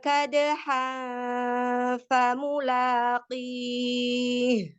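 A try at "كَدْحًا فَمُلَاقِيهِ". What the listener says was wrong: Perhatikan di kadhal fa, hindari bunyi ang ya. Jangan ada bunyi ang. Kadhal fa. Fa mulaqi. Menempel di makhluk fa ya. Nempel di huruf fa.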